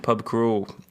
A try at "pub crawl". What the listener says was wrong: You can't say pub crawl. It's a pub crawl. No, the emphasis is not on the crawl. No, the fun bit is the pub, not crawl. It's not a pub crawl. Pub crawl, not a pub crawl.